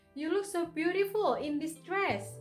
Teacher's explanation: jadi ada beberapa tekanan kata pada kata beautiful dan dress.